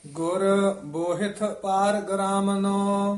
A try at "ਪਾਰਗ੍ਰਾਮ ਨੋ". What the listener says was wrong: ਪਾਰ ਗ੍ਰਾਮ ਨੂੰ ਪਾਠ ਜਿਹੜਾ ਹੈ ਇਹ ਪਾਠ ਇਕੱਠਾ ਹੀ ਹੈ। ਪਾਰ ਦੇ ਵਿੱਚ ਡੈਸ਼ ਦੇ ਕੇ ਉਚਾਰਨ ਕਰਨਾ। ਪਾਰਗ ਗੱਗੇ ਤੋਂ ਨਹੀਂ ਤੋੜਨਾ। ਗੁਰ ਬੋਹਿਤ ਪਾਰ ਗ੍ਰਾਮ ਨੂੰ।